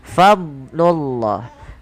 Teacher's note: huruf dhad itu bukan huruf yang mantul